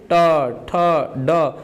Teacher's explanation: मूर्धा क्या होता है, तो मूर्धा देखिए जैसे ट ठ आप बोलेंगे ना, आपका जीभ का जो अगला हिस्सा है वो आपके अंदर मुख के ऊपर वाले भाग पर क्या होगा, जाकर टच होगा